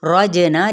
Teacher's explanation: رجنا جیم پہ قلقلہ، نون کی حرکت کو لمبا نہیں کریں گے